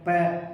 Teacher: अगर हम दोनों ऊपर नीचे के होठ को टच नहीं करेंगे तो प की साउंड निकलेगी नहीं, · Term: ओष्ठ